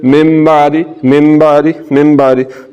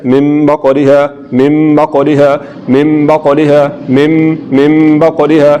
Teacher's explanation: नून साकिन की जगह पर हमने यहाँ पर मीम की आवाज़ निकालनी है और आवाज़ को नाक में भी लेकर जाना है और इसको पढ़ना है, मिम बा कौरी है, मिम बा कौरी है, मिम बा कौरी है, मिम बा कौरी है। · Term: इखलाब